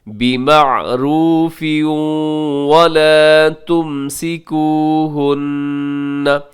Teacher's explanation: بِمَعْرُوفٍ پہ تنوین اور تنوین کے بعد واو یرملون کا ادغام مال غنہ